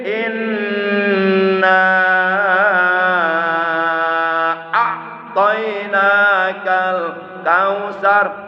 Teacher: Nunnya wajib digunakan, wajib ditahan, nahannya 1 alif 2 harkat dan didengungkan. Kemudian naknya dibaca 2, alif 5 harkat, karena itu hukumnya adalah mad jaid munfasil. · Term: nun gunah